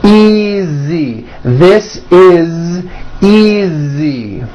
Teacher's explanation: Again, the S is like a voiced Z.